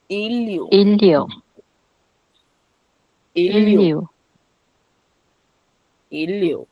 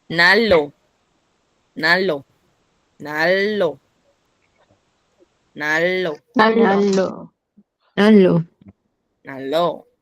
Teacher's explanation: Se hizo el mismo cambio, ¿sí? La n cambió a L